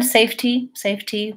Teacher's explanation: more of a light D if you said safety safety with with a puff of air the aspirated T